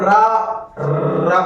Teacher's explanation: अब रा बोलेंगे तो हमारी जीभ उल्टी होकर कई बार प्रकंपित होती है, यानी कंपन होता रहता है। लुंठित मतलब जीभ को लुढ़कना होता है, तो इसलिए हमारा लुंठित व्यंजन के अंतर्गत रा वर्ण आता है। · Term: प्रकंपित व्यंजन